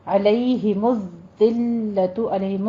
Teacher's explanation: علیہ میں عین کو وسط حلق سے ادا کیجئے